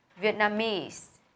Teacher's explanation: Vietnamese thì âm tiết thứ 3 được nhấn này.